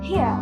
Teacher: the post-vocalic R in standard British English is not pronounced